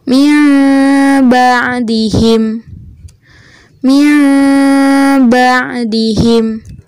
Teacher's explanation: Terdengar ada bunyi nun sukun berubah menjadi mim, tapi ada samarnya atau ada dengungnya. Jadi, kita baca bukan mim ba'dihim, tapi min ba'dihim. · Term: iqlab